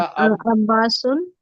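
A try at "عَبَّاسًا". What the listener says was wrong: अब्बा सुन क्यों लिखूंगा? अभी मैंने बताया, अब्बा सुन क्यों लिखना है बताइए? सन लिखना है ना, सुन नहीं लिख सकते।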